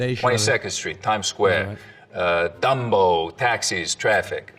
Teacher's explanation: The tongue tip hits the teeth or close to them on TDN sounds instead of, you know, a little further back.